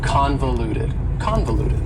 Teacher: four syllables and the stress is on the first syllable convoluted that second syllable again has that schah sound that reduced vowel sound